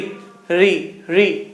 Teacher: री जैसे आपने बोला तो आपको लग गया कि अरे यार मुंह तो कहीं ना कहीं टच कर गया, री, है ना। जो आपकी जीभ है ये तालू पे से हल्की सी रगड़ रही है ना